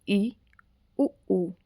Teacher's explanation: आगे है हमारे पास संवृत स्वर मतलब क्लोज। जब जीभ मुख विवर के अधिकांश भाग को घेर ले वहां पर संवृत स्वर होते हैं।